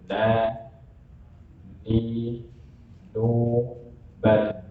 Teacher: Dari ujung lidah nempel pada gusi 2 gigi seri atas. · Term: huruf nun